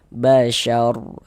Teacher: Maka berarti huruf ro sukun sebelumnya di sini ada tanda baca fathah, maka huruf ro sukunnya dibaca tabkhim juga, dibaca tebalkan